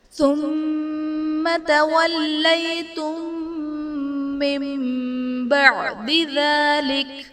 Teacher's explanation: تولیتم میں میم ساکن کے بعد دوسری میم ہے تو یہاں پر ادغام شفوی کا قاعدہ ہوگا، یعنی میم ساکن میں ہم غنہ کر کے پڑھیں گے۔